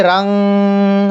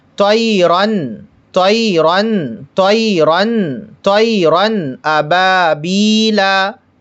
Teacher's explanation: طیرن، رن، غنہ نہیں کریں گے، رنگ، رن، اس طرح سے نہیں کریں گے، رن، نون کو ظاہر کریں گے، تنوین کو ظاہر کر کے پڑھیں گے، تنوین ظاہر کر کے پڑھیں گے، طیرن، طیرن، طیرن، طیرن ابابیلا، طیرن ابابیلا، طیرن ابابیلا۔ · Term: اظہار